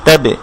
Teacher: বা সাকিন কলকলা হবে, অর্থাৎ সাউন্ডটা রিভার্ভ হবে, সাউন্ডটা একটু ফেরত আসবে